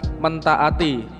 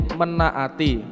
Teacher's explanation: Hal ini dikarenakan kata dasar taat diawali dengan fonem T, kemudian diikuti dengan vokal, maka awalan me akan berubah menjadi men dengan meluluhkan atau menghilangkan fonem T